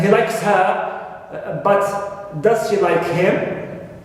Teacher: Although they are object pronouns, but they are stressed. Why? Because they are put in a situation of contrast. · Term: strong form